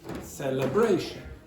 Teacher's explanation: You have secondary stress on the first